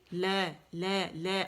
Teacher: جو دانت اس کے پیچھے جو مسوڑے ہیں نا اس کے اندر لگے گا پورا، اور آواز سائڈوں سے نکلے گی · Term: لام کا مخرج